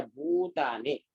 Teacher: द्विमात्रिक यानी 2 सेकंड का समय देना है, वो ज्यादा लंबा नहीं खींचना है